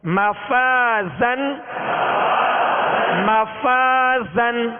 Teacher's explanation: اور آخر میں زا، زا کو سختی کی آواز، سیٹی کی آواز اس میں پیدا ہوگی